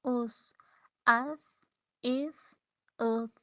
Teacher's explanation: اچھا جب آپ اس کو ساکن کریں گے نا تو پھر اس کے مخرج پر رک کے دیکھیں کہ یہ کہاں سے ادا ہو رہا ہے، پھر آپ کو پتہ چلے گا کہ یہ ہماری زبان کی جو نوک ہے، جو ٹپ ہے، وہ سامنے والے اوپر والے 2 دانتوں کے کنارے سے لگ رہی ہے